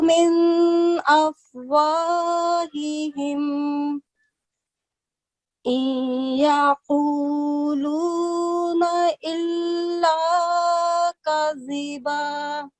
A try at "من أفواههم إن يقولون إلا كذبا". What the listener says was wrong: Just one thing is, I couldn't differentiate when you were reading it. I couldn't see any difference between alif and ayn sound. Okay, so ayn is from your throat and alif is just a normal sound. So okay, ayn should be from the middle of the throat.